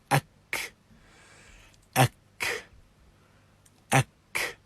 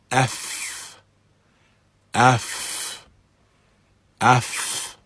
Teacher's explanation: And if we move on then to the Ta, similarly, at, at, at. And in all of these you can hear the expulsion of air, and in some cases strong expulsion of air from the mouth. Likewise with the Fa, F, F, F.